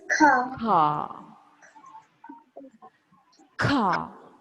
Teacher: in British accent there is no R